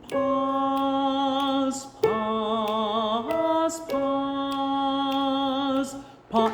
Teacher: it can be soft it does not have to be a strong Zed sound but just a little bit of a softer softer sound